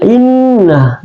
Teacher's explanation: alif itu adalah aksal halki, keluar di pangkal tenggorokan. Inna, nun tasdik, kemudian ini adalah termasuk dia gunnah, jadi ditekan sampai 2-3 harakat.